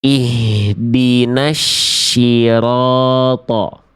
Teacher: Karena yang dibaca bukan huruf shad lagi. Yang dibaca sudah berubah menjadi huruf shin.